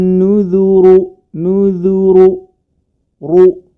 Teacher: Jangan sampai nuudu nuudu karena huruf rnya ini berharakat dah dan harus ditebalkan jangan sampai ikut Tebal juga huruf nun dan huruf dnya cukup di huruf rnya saja